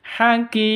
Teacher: ini mad arid disukun, panjangnya boleh 2 ketuk, boleh 4 ketuk, boleh 6 ketuk.